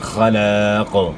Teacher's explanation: اور یہاں وقف کریں گے طوا کے اوپر, تو قاف میں پھر قلقلہ ہوگا, کیونکہ وقف کی وجہ سے قاف ساکن ہو جائے گا, یعنی اس کے اوپر سکون آئے گا, جزم آئے گی, تو اس صورت میں وقف کی صورت میں قاف میں قلقلہ بھی ادا کرنا ہے, یعنی موٹا بھی پڑھنا ہے اور قلقلہ بھی